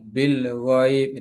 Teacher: Alif lam dibaca dengan idhar atau jelas bil ghaib. Ada tanda sukun di atas huruf alif lam sukun. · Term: alif lam qamariyah